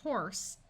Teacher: So the purpose of the E on this word is to let you know that you are just talking about one horse. The E also makes the S have its unvoiced sound of S at the end of a word.